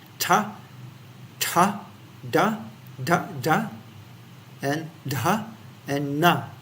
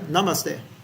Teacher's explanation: sounds made by a constriction between the tip of the tongue and the upper teeth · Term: danta